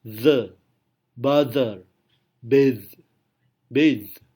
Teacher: Lawan dari theta voiceless adalah voiced dental fricative. Ini biasanya diucapkan seperti z, z.